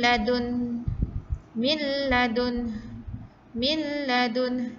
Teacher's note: Dimasukkan terus tanpa ada dengung